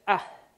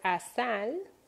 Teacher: Okay, so the sound is kind of like ah, it's like a stop, glottal stop, but it's not as strong as it is in Arabic, like ah, right?